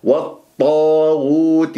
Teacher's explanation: الطاء مفخمة مرتبة أولى المفتوح بعدها ألف، ولا تكور الشفاه تقول والطو، لا والطاغوت.